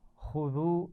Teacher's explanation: خا کو موٹا پڑھنا ہے، دال کو نرمی سے پڑھنا ہے. ما آپ دیکھ رہے ہیں وہاں پر چھوٹی مد بھی ہے تو الف مدہ سے تھوڑا زیادہ کھینچ کر پڑھیں گے.